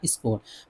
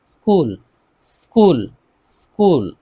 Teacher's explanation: س کی آواز نکالنی ہے لیکن اس نہیں کہنا ہے